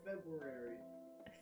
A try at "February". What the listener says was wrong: There's no W in February.